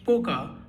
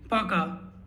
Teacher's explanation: It's not Poka as you see in the spelling. It's Пока because the O is unstressed.